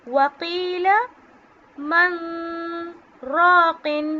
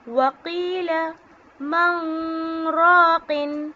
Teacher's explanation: اس میں نے میم نون زبر من نہیں بولا، میں نے نون کی آواز کو ساکن کیا ہے، یعنی نون کی آواز میں ناک میں لے کے گئی ہوں اور اس میں غنہ کیا ہے، جس سے نون کی آواز ظاہر نہیں ہو رہی لیکن سانس جاری رہے گی، ٹھیک ہے۔